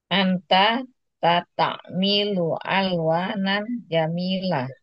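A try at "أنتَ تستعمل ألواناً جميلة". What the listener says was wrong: Tastamilu. Ainnya biar agak kerasa ya. Tasta. Ta.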